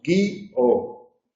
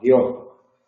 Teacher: La primera persona del presente tiene dos sílabas, guío. La tercera persona del pretérito perfecto simple tiene una sola sílaba, guió.